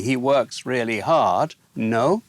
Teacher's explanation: in these attempts to change the statement into a question you just use no with rising intonation · it's interrogative because they raise their voice as they say it